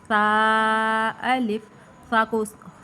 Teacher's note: یہ زبان کے سرا اور اوپر کے دانتوں کے اندرونی کنارے سے ادا ہوتا ہے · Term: حروف لثویہ